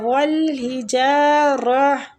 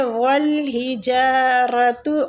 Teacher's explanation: اگر ہم رک رہے ہیں تو ہم تا کو ہا میں تبدیل کر دیں گے